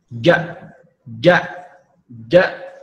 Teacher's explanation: Huruf jim itu yang tadi wastul lisan wa ma yuhadhihi minal hanakil a'la ya. Jadi menempelkan tengah lidah ke langit-langit.